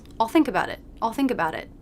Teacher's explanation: i'm really just making one sound and it's the dark sound of the dark l my tongue tip is here touching the back of the bottom